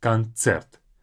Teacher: In English we say concert, like a s, but in Russian it's ts. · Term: this ц